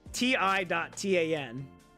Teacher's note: So, in Latin, it's ti.tan, with the emphasis of the first syllable and the A pronounced like an ah in father